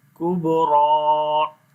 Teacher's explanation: با کے اوپر قلقلہ کریں گے جو کمزور قلقلہ ہوگا اور را کو موٹا پڑھیں گے اور لمبا بھی کریں گے